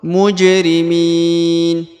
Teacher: Berharokat sukun maka dipantulkan, bacaannya dipantulkan karena dia adalah salah satu daripada huruf-huruf pantul atau disebut dengan huruf qalqalah.